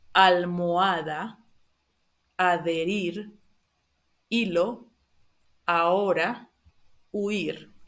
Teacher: As you probably already know, the H is silent in Spanish. It's not pronounced.